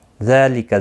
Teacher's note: زال کے اوپر کھڑی زبر ہے، ایک الف کی مقدار کے برابر کھینچ کر پڑھیں گے